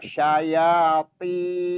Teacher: Sya-nya nggak panjang, yang dipanjangkan 2 harakat, ya-nya dan tin, to-nya ditebalkan.